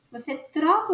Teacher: Você troca os dois T's por um R. Better. Então você olha T, mas você não fala T.